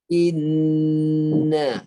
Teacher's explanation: Dengung dia di rongga hidung. Dia guna rongga hidung ini sepenuhnya. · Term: nun dan mim yang bersabdu